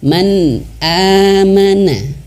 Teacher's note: maka dibaca jelas tanpa dengung